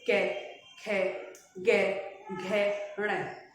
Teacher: जब क वर्ग का उच्चारण किया जाता है तो इसमें जो ध्वनि निकलेगी वो गले से निकलेगी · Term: कंठ